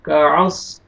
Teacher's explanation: صاد کو آپ نے موٹا کر کے پڑھنا ہے